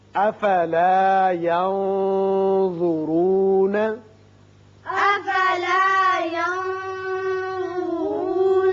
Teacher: یہاں نون پر اخفا کیجئے اور را پر پڑھیں گے